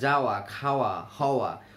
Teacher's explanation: এই দুটি ধ্বনি পুরোপুরি ব্যঞ্জন ধ্বনি বলে গণ্য করা যায় না। ধ্বনিটি উচ্চারণের সময় দুই ঠোঁট গোলাকৃত হয়ে সংকুচিত হয় ও বাতাস বেরিয়ে যায়, কিন্তু কোথাও কোনো স্পর্শ ঘটে না। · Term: নৈকট্যমূলক ধ্বনি